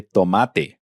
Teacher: D and T in Spanish are dental.